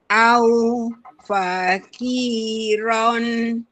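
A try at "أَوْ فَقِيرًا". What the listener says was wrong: eh bukan ran dengung kat situ.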